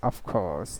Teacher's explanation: So R will not be pronounced. It will be silent.